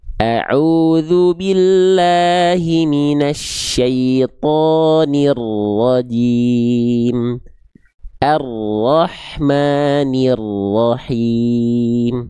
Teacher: Dia bergetar, tapi bukan dengan karakter getaran yang terlampau berlebihan. Ya, jadi bukan dibaca roriru. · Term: takrir